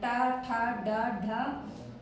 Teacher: तो मूर्धन्य से ट वर्ग बोला जाता है